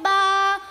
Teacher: ब का मखरज दोनों होठों के तरी वाला हिस्सा